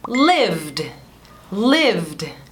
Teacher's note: V. Você tem que ter sua voz, tem que usar sua voz, vai ter uma vibração aqui para poder produzir o som de V. Então, você falaria lived, lived.